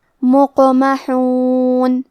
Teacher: کلمت مقمحون میں قاف ہے اور اس پہ جزم ہے، تو یہاں قاف کا حکم ہے قلقلہ. ہم حرف القاف کو ہلاتے ہوئے یہ کلمہ کو پڑھیں گے.